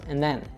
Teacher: And the other thing that's kind of happening here with and then is that when we have a D followed by a TH sound, the articulation of both those kind of happen in the same part of the mouth. So oftentimes one of the sounds will disappear. That's, again, and then we get rid of the D.